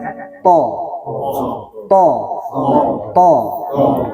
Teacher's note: Ujung lidah bertemu dengan gusi gigi seri atas.